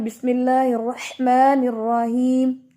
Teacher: جتنا آپ یہاں پر سانس کو پروناؤنس کریں گے، سانس کو آپ باہر نکالیں گے، اتنا ہی آپ کا ہا جو ہے وہ کلیئر ہوگا